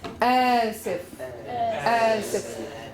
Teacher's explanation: What do you hear in the beginning? You hear a glottal stop